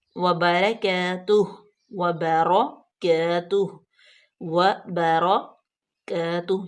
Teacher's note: یہاں پہ صرف را پور پڑی جائے گی، باقی سارے لفظ جو ہیں وہ باریک